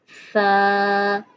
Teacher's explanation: ज़बान का अगला हिस्सा जो है उसका कोना 2 दांतों के दरमियान आए। सा। सा नहीं पढ़ेंगे, वो सीटी की आवाज़ आएगी।